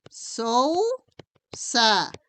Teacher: primero está la abierta y después la cerrada por lo tanto es de diptongo decreciente